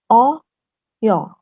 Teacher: Hampir seperti antara A dan O ya